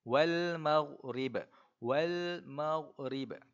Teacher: Bacaan yang tepat ialah kita matikan huruf ghin tadi tu tanpa ada lantunan. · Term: huruf ghin yang mati